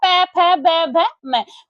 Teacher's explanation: ये आपके किससे बोले जाते हैं, ये ओठों से बोले जाते हैं प, फ, ब, भ, म